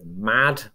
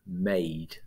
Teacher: it elongates the preceding vowel so take the word mad okay it's got a short vowel in the middle there and by bunging an e on the end you're elongating the vowel to a diphthong